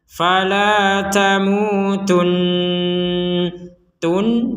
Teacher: Contoh ya, yang barusan kita praktekkan, fala tamutun, tun ya, kemudian di rongga hidung kita didengungkan. Tun ada dengungannya, bukan sekedar tun gitu.